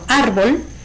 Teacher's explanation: árbol es una palabra de 2 sílabas, donde su sílaba tónica es ar